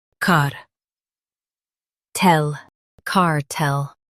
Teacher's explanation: Stress tel and keep car soft.